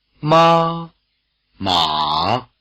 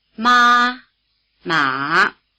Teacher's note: they contrast in Contour as well as in Pitch the high tone is level as well as high and the